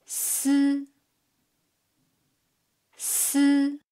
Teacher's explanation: When pronouncing si, the front part of the tongue tip stays away from the inner surface of the upper teeth all along, leaving a gap for the air flow to get through.